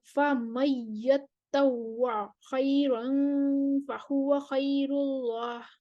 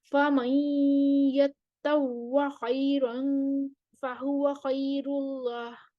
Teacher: خلف کا ادغام بلا غنہ ہوگا